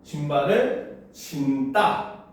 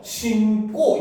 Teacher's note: 니은, 미음 뒤에 이어지는 어미의 첫 소리, 예사소리는 된소리로 발음을 합니다